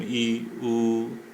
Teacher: वे स्वर जिनके उच्चारण में मुंह बहुत कम खुलता है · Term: समृत स्वर